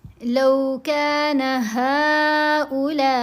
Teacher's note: ہا کے اوپر مد ہے، یہ مد منفصل ہے، اس مد کو ہم نے 3 حرکت کے برابر لمبا کیا۔